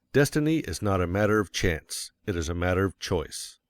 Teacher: Of course, you will want to emphasize destiny, for it is the principal idea in your declaration, and you will put some emphasis on not, else your hearers may think you are affirming that destiny is a matter of chance.